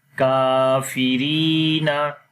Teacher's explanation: فی کافی، را یا زیر ری کافری، نون زبر نا کافرینا، ری کو لمبا کیا یا مدہ کی وجہ سے